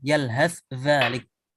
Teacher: dengan menampakkan sa-nya kebaca dan kemudian zalnya juga jelas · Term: izhar